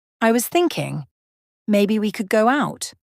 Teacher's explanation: the first part is neutral then it rises at the end